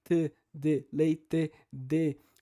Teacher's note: Então, enquanto que no sul, assim como acontece, por exemplo, em alguns sotaques também do Nordeste e do Norte, tem a tendência de falar o T e o D menos africado. Ou seja, T, D, leite, D.